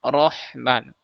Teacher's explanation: Jadi, bukan ro seperti yang di vokal ee Indonesia ya diucapkan o rohman tapi rahman. Ro, kita naikkan pangkal lidah kita supaya tebal. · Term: huruf ro